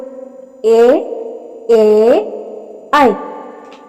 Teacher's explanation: ഉച്ചരിക്കാൻ കണ്ഠവും താലുവും വേണം അതുകൊണ്ട് ഇവയെ കണ്ഠതാലവ്യം എന്ന് പറയുന്നു കണ്ഠവും അണ്ണാക്കും കണ്ഠവും താലുവും ഉപയോഗിക്കുന്നതുകൊണ്ട് ഇവയെ കണ്ഠതാലവ്യം എന്ന് പറയുന്നു